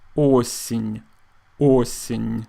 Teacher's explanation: Now, o is stressed, so it is pronounced like o, but the letter ye is not, so we pronounce it more like i.